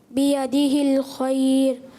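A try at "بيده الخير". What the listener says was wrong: ماشاء اللہ.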